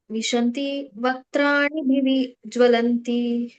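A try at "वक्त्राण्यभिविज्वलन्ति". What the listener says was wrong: ವ್ರಾಣಿ ಹೇಳಿದ್ರೆ ಅ ಹಚ್ಚಬೇಕಲ್ಲಿ ವಕ್ತ್ರಾಣಿ ಅಭಿವೇಜ್ವಲಂತಿ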